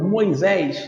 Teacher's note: A sílaba tônica é a última. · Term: oxítona